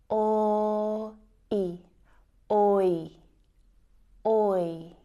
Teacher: the oi diphthong sound is actually made up of the o and I vowel sounds.